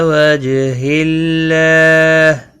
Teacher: اللہ کا لام اس زیر کی وجہ سے باریک پڑا جائے گا یہاں پر، اور اس کے اوپر کھڑی زبر بھی ہے، ایک الف کے برابر کھینچ کر پڑھیں گے، ہا ساکن پڑا جائے گا، وقف بالاسکان ہوگا۔